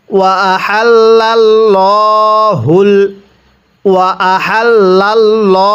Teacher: আল্লাহ শব্দের পূর্বে জবর অথবা পেশ থাকলে ওই আল্লাহ শব্দটিকে মোটা করে পড়তে হয়